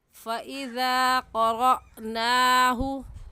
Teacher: ज़ाल को एक अलिफ के बराबर खींच कर पढ़ेंगे, ऐसे कहेंगे फ़इज़ा क़रअनाहु। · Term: अलिफ मद्दा